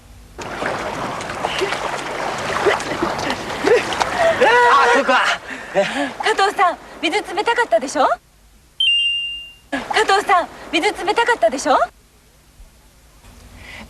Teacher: a little different from that which you've heard before watch again did your ears pick up the fact that it ended with a rising intonation